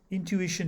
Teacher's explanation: intuition has four syllables and the ish is stressed